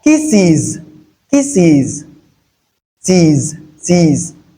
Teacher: After the E. The E sound which is a voiced sound. The S here is produced as Z.